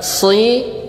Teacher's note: Bibirnya jangan dimaju. Kalau maju jadi sui. Lah, bukan sui tapi si. Rahangnya ditarik ke bawah.